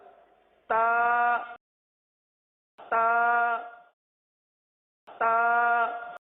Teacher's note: जबान की नोक और ऊपर के दांतों की जड़ से अदा होते हैं